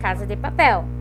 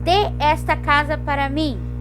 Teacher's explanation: Eu não dou ênfase para essa palavra, Casa de Papel. Eu dou ênfase para casa e dou para papel. E o de não tem ênfase.